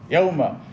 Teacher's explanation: হরফেলিন কি হরকতের মতো, হরকতের উচ্চারণ তাড়াতাড়ি করতে হয়, ঠিক হরফেলিনও তাড়াতাড়ি করতে হবে। ইয়াউমা, এখানে ইয়াউমা পড়া যাবে না, ইয়াউমা তাড়াতাড়ি, হরফেলিন কি তাড়াতাড়ি করতে হয়।